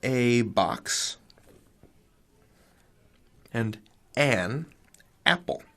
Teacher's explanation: it's the difference between saying a box and an apple and what we don't say in standard American English is a Apple it's not as easy on the mouth